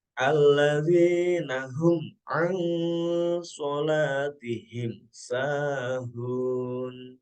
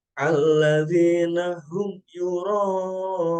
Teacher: Jadi huruf mim di sini tidak boleh ada dengung sedikit pun, alias harus dibaca jelas. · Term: idhar syafawi